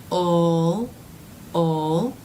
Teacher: In the dark L, the middle part of the tongue is raising a bit in that vowel-like sound. So since the middle part of the tongue is doing some work, ul, the sound will feel more in the middle of the mouth, further back than the light L.